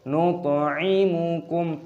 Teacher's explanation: Nut'imukum, toknya berharokat sukun, dibaca qalqalah, pantulkan suaranya.